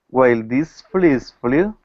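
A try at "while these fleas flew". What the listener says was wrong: make sure it's these once again you want to make the e a little longer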